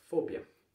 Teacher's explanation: Fobia, sílaba tônica é a primeira e o E, o O é fechado.